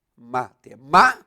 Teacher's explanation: Ela tem a terceira sílaba de trás para frente tônica. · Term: palavra proparoxítona